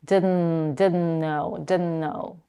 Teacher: She says, I didn't know, when she is dropping the T, the T in didn't, and the next word starts with an N, no, I didn't know. She's connecting both consonants in a way that she doesn't release her tongue from one N to the next. She's just putting the tongue behind the upper teeth and she's keeping it there until the next word, no, and she's releasing it then.